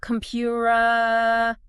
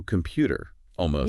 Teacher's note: it's like a quick little tap of the tongue against the alveolar ridge. Okay, so it doesn't sound like a hard T. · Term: flap sound